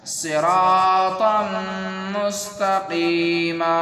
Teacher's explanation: اس طریقے سے یہاں پر تا 2 زبر تن ہے اور یہ تنوین ہے اور میم یہاں پر یرملون کی ہے، تو یہاں پر غنہ کرنا ہے